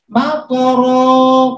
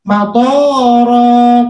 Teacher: tapi dibaca matoro, tonya jadi panjang, otomatis artinya berubah.